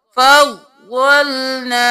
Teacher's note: ضاد موٹا پڑھیں گے، ضاد پر تشدید ہے 2 بار، فا زبر ضاد فض، ضاد زبر لام ظل، فض اور ظل، فضلنا۔